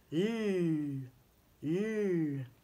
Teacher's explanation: Le bout de la langue touche le voile du palais. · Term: le son L